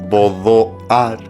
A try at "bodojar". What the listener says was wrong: Pero lo has de pronunciar, con H, bodojar. Bodojar. Una H expirada, claro, que es esa letra que te digo que está allí, que no tenemos un significado claro.